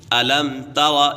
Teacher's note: ألم تر یہاں پر اظہار شفوی کا قاعدہ لگ رہا ہے کیونکہ میم ساکن کے بعد حرف با اور میم کے علاوہ کوئی بھی حرف آ جائے تو میم ساکن میں اظہار شفوی ہوگا، یعنی غنہ نہیں کریں گے، اسی وجہ سے یہ میم ساکن کے اوپر غنہ نہیں ہوگا۔